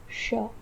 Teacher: जब आप श इस वर्ण का उच्चारण करते हो तो आपको आपकी जीवा आधा स्पर्श करनी चाहिए मूर्धा स्थान को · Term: अर्ध स्पृष्ट